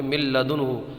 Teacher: یہاں پر ادغام ہوگا لیکن اس میں گننا نہیں ہوگا